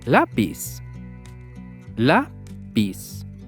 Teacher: we stress the syllable 'lá'